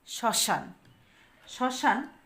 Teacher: যদি ম ফলা থাকে তাহলে সেই বর্ণের উচ্চারণে কিছুটা ঝোক পড়ে শব্দের প্রথমে ম ফলা থাকলে সেই ম এর উচ্চারণ কিন্তু হয় না বরং যেই বর্ণের উপর বসছে যে বর্ণের সাথে যুক্ত হয়েছে সেই